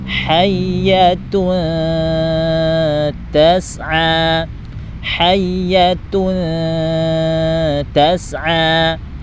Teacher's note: Jadi dengung terlebih dahulu, kemudian sambil mengarahkan lidah kita ke huruf ta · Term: dengung tipis